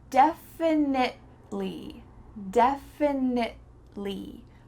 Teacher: We're stopping at that T sound. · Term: stop T